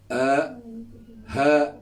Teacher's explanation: Ha iaitu huruf hamzah dan juga ha. Itu kerongkong paling bawah.